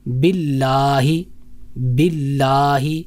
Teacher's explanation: اس کے بعد باللہ کی ہا کی طرف آتے ہیں. جو یہ ہا ہے یہ سینے کی طرف سے ادا ہوتا ہے, گلے کے اس حصے سے ادا ہوگا جو سینے کی طرف سے ہے